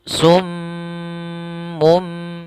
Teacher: Apabila ada mim tasydid itu hukum bacaannya adalah gunah gunah yaitu suara m-nya ditahan cara membacanya sum ditahan dahulu tidak langsung summun ya tapi ditahan